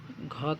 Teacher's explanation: घ का उच्चारण स्थान कंठ होता है।